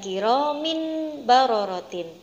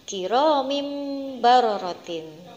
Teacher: kasrotainnya diganti dengan huruf mim sukun, ditukar dengan mim sukun, yaitu berbunyi kiromim barorotin, bukan kiromin barorotin. · Nah, seperti itu tadi cara membaca bacaan iklab, yaitu menukar suara nun sukun dan tanwin menjadi suara mim sukun